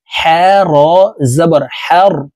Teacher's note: এটি বড় হা হলুকের মধ্যখান থেকে উচ্চারণ করব কারণ এই হার মাখরাজ হলুকের মধ্যখান থেকে হবে হা জবর হার